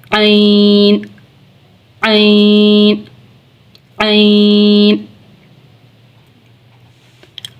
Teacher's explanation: आगे है ऐन ऐन ऐन ऐन और हा, इन दोनों का एक ही मखरज है, वस्ते हलक यानी हलक का दरमियान वाला हिस्सा